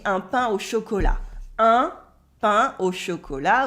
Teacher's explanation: Un pain au chocolat with the un at the beginning, and you don't say the T of chocolat